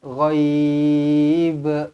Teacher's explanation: Dan dilantunkan huruf ba di hujung ini.